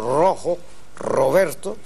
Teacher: en posición inicial cuando decimos rojo Roberto la hacemos vibrante y doble pero es porque o va entre vocales o inicia palabra es